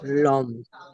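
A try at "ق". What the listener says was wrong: লাম নয়, কাপ, কাপ, কাপ। জিভের গড়া হতে একটু আগে সরে এসে আগে বাড়িয়ে বারবার উপরে তালুর সঙ্গে লাগিয়ে উচ্চারিত হয় কাপ।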